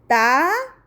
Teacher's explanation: تا زبان کی نوک ثنایا علیہ کے سامنے والے 2 دانتوں کی جڑوں سے لگے تو تا ادا ہوتا ہے